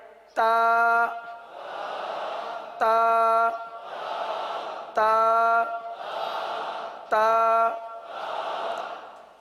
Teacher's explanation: زبان کی نوک کو آپ نے دانتوں کی جڑ پر لگانی ہے، پڑھنا ہے تا تا تا تا۔